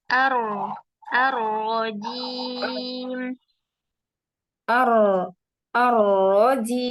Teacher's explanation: berikan sedikit takrir pada huruf ro